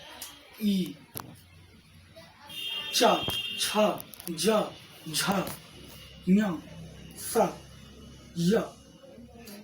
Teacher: इ चवर्ग च, छ, ज, झ, य और स तालव्य स, इन सभी वर्णों का उच्चारण तालु के सहायता से होता है।